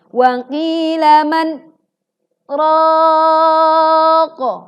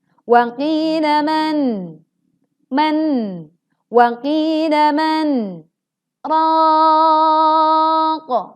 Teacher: Dia memutuskan, dia memang berhenti, tetapi dia lupa dengan sifat tawassut atau bainiyah pada huruf nun sukun. Maka biarkan sebagian suara memasuki rongga hidung, ada en.